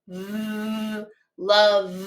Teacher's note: That V makes a vibration. It's a voiced sound.